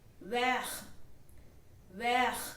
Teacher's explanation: The T in the end will not be pronounced. It is going to be silent.